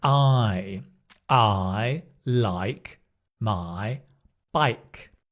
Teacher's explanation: I goes from A to I. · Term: dip thongs